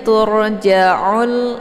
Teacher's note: ro sukun hukum bacaannya yaitu ditebalkan ya karena sebelum R sukun berharakat zumma yaitu dengan posisi pangkal lidah naik ke atas langit